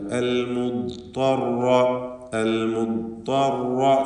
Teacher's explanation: ദ്വാദ് ത്വാ റാ 3 അക്ഷരത്തിനും തഫ്ഖീമാണ്. ശേഷം റാ ഷദ്ദുള്ള റാ ആണ്. അത് ഷദ്ദുള്ളത് കൊണ്ട് അതിൻ്റെ തക്രീർ സൂക്ഷിക്കണം. അർ എന്ന് വിറയൽ വരാതെ സൂക്ഷിക്കുക.